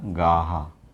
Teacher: प्रत्येक वर्ग का दूसरा और चौथा, ये इनका हा के रूप में उच्चारण है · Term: महाप्राण व्यंजन